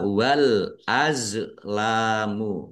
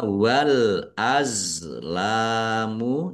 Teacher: Za sukun ini bukan qalqalah. Jangan dipantulkan jangan dibaca wal azlamu tapi dibaca wal azamu ya.